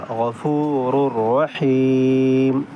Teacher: So tanween is followed by idgham letter ra. So we will merge the sound of tanween into ra, but without gunna. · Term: idgham without gunna